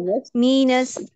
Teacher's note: सीन में सीटी पाई जाती है, और सांस जो है वो सांस चलती है इसमें